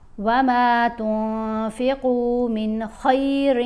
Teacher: اب ہم نے نون کی آواز کو ناک میں چھپا کر پڑھنا ہے